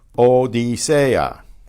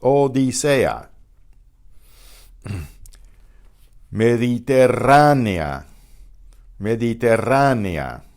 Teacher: the E and the A are both strong vowels, so they will be pronounced as different syllables